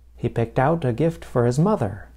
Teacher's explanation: Note that I placed stress on out, the last word in the phrasal verb. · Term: word stress